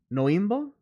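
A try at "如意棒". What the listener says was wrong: There is no N. There's Noibo. Noibo. It's like nya.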